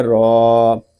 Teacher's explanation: را کو ہم ایک الف تک کھینچ کر پڑھیں گے کیونکہ را کے اوپر کھڑا زبر ہے، اور کھڑے زبر کو ہم ایک الف تک کھینچ کر پڑھیں گے کیونکہ کھڑا زبر جو ہے الف مدہ کے قائم مقام ہے.